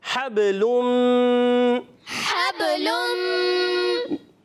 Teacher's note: یہ قاعدہ ہے ادغام مال غنہ کہ تنوین کے بعد آ گیا میم, ادغام مال غنہ ہوگا, ایک الف کا غنہ کریں گے